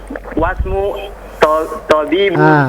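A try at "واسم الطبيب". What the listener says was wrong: disambung. Wasmut, disambung dengan ta-nya. Wasmut. Wasmut tabibi.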